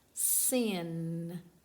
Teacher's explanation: My tongue is on the top of the mouth behind my front teeth.